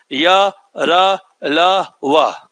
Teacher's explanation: व्यंजन में क्या होता है इसकी संख्या भी चार है पर जीभ ना रगड़ता है ना जीभ आपको स्पर्श करता है जीव बल्कि मुख के अंदर गोल घूम जाता है इसलिए उसे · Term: अंतस्थ व्यंजन